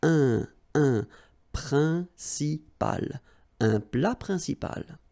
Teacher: remember, it's nasal, it goes in your nose